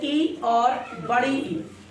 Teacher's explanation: तालु से निकलती है ई और बड़ी ई